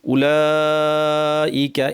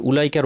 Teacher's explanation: এই ওয়াওটাকে কিন্তু টানা হয় না , খেয়াল রাখবেন, উলাইকার ওয়াও টানা হয় না, উপরে ঢেউ আছে,